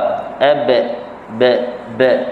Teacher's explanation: Jadi dia menghampiri ataupun hampir kepada kasrah bunyinya pada sebutan huruf ba. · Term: Qalqalah